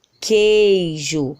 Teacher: a gente escuta o som do G e escuta o som do E, mas não escutamos o som do U